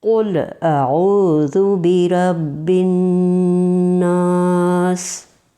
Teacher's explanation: इससे गुना अदा होता है यानी नाक में आवाज लेकर जाना